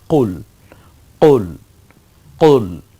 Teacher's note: আমার সাথে একটু গম্ভীর আওয়াজে হবে, জিহ্বার গোড়া থেকে উচ্চারিত হয় মূলত এই কফটা